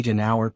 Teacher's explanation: not just the letter for instance we say an hour because the H in hour is silent making it sound like it begins with a vowel sound